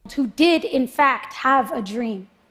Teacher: she added the word did to emphasize the action and she added the word in fact and stressed it too to emphasize the action